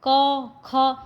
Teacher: ये जब आवाज़ आती है तो आपके गले से आती है, यानी कि आपके कंठ से आती है। इसीलिए इनका उच्चारण स्थान कंठ होता है।